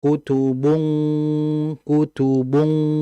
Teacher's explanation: agak sedikit hentakan di ujung mungkin ya untuk menandakan bahwa lidah pangkal itu naik ke langit-langit atas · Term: ikhfa